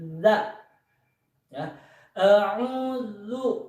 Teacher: huruf za ini sifatnya jahar, harus jelas, tidak pecah, tidak hamas